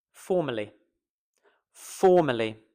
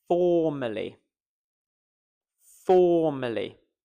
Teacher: We are stressing the first syllable.